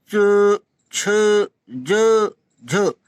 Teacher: इनके उच्चारण मुख द्वार को बंद करके इस प्रकार खोलते हैं कि हवा उच्चारण स्थानों को स्पर्श करती हुई और रगड़ती हुई बाहर निकल जाती है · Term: स्पर्श संघर्ष